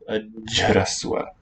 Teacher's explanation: the h is a voice sound because it voices the palatal ch to a j, and it lengthens the occlusion. You get a long geminate sound.